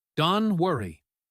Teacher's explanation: don't often loses the t at the end becoming don